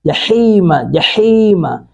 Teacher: حا کو حلق سے ادا کریں گے